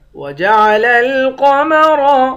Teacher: قاف اور را ان دونوں کو موٹا پڑھیں گے